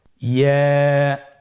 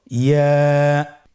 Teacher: ইয়া হরফটি উচ্চারণের ক্ষেত্রে বারিক হবে এবং এক আলিফ টেনে পড়তে হবে।